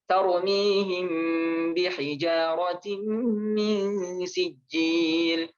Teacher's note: ikhfa syafawi itu ya kayak ditasydidkan gitu ya, ditahan begitu ya